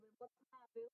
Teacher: el verbo travel suena más fuerte donde dice ta